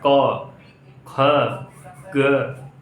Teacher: क का उच्चारण स्थान कहां से होता है कंठ से